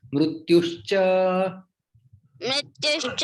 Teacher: यहाँ पे विसर्ग का लोप हो जाता है, विसर्ग संधि।